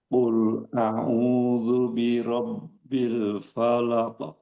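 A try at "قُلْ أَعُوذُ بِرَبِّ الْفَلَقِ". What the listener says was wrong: Usahakan setiap huruf-huruf yang tipis action-nya itu optimal a maksimal a bukan o. O o tidak tapi a fa bukan fo.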